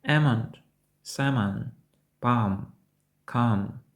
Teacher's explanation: коли є alm то ми досить часто не вимовляємо L